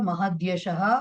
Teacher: కాబట్టి ఇప్పుడు తకారం కాస్త తవర్గంలో మూడవ వ్యంజనమైనటువంటి దకారం కింద మారుతుంది. మహత్యశః కాస్త మహద్యశః అయిపోతుంది.